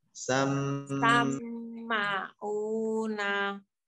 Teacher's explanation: pertama mim bertasydid harus ditekan